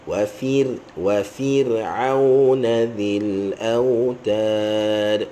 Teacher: Ra tu mati, sebelum dia fa tu baris bawah, maka kita baca nipis